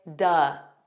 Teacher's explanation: you can take the word of and you can make it an unstressed sound and say duh